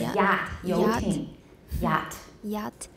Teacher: The front of the tongue is raised toward the palatal area of the roof of the mouth.But it does not come close enough for a fricative sound to be produced. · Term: approximant